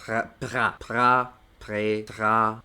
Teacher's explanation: la R puede sonar como una G, sobre todo cuando va entre una consonante y una vocal